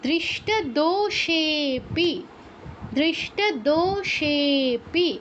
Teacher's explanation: তারপর দৃষ্ট দোষেপি, দৃষ্ট দোষেপি, দো দীর্ঘ, সে এটাও দীর্ঘ, কিন্তু পরে লুপ্ত থাকে, এটা প্লুত হয়ে যাবে, প্লুত হয়ে এটা আরও একমাত্রা বেড়ে শেপি হয়ে যাবে, বেশি সময় নিয়ে উচ্চারণ করতে হবে